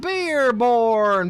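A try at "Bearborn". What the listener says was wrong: Bear. Not beer. It's bear.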